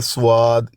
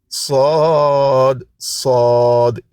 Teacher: یہ دیکھیں صاد منہ بھر کے مفخم پڑھنا ہے